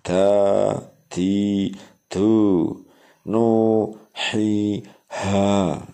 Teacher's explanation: dan panjang mad tabi'i 1 alif atau 2 harokat